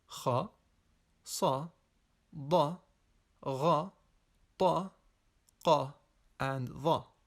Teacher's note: the elevation of the deepest part of the tongue in the direction of the soft palate, creating a heavy or what is sometimes described as a full mouth effect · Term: Al-Isti'laa